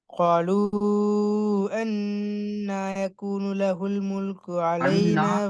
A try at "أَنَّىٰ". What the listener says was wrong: அண்ணான்னு சரி. அது அண்ணான்னு மாதிரி அண்ணன் قالوا أن يكون له அண்ணான்னு போக கூடாது.